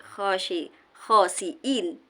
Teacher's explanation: kalau kita mengucapkannya keliru, jadi khasi'in, yang jadi shin jadi si